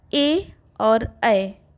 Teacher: ए और ऐ का उच्चारण कंठ तालु से होता है।